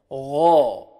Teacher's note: ان میں سے ہے یہ غین، حروف مستعلیہ میں سے، تو غین کو موٹا کریں گے اور کھینچیں گے، ایک الف کے برابر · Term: موٹے حروف